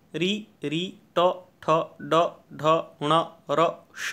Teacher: मूर्धा से री, ट, ठ, ड, ढ, ण, र, श का उच्चारण होता है